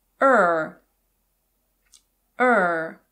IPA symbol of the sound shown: ər